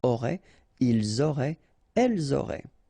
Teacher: ENT, you don't pronounce it